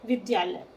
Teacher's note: तो विद्या में आ है, आलय में आ है, और दोनों दीर्घ आ को मिलाकर हम एक दीर्घ आ कर देते हैं, शब्द हमारा बन जाता है विद्यालय।